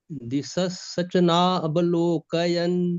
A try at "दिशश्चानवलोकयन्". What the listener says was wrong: सचना नचना सचना नहीं है, दिशश्चानवलोकयन।